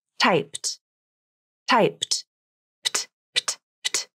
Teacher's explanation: A voiceless final consonant means you'll have a voiceless ed ending. You don't add another syllable here. It's just another consonant added to the end of the verb, and it creates a consonant cluster. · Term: The PT cluster